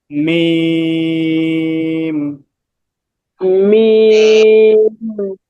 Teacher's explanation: মিম হলো দুই ঠোঁটের শুকনো অংশ থেকে তিন আলিফ টান